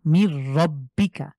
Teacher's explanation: কা মির রব্বিকা এখানে গুন্না হবে না কেন হবে না কারণ নুন সাকিনের পরে গুন্না ছাড়া হরফ হলো র তো আমরা র কে সরাসরি মিলিয়ে পড়বো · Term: গুন্না ছাড়া মিলিয়ে